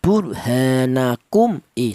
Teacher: Yang dibaca jelas adalah mim mati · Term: izhar syafawi